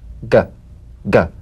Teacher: the voiced tongue back plosive consonant G place the back of the tongue in gentle contact with the · place the back of the tongue in gentle contact with the soft palate let the tongue spring away play this drum beat on the springing action of the back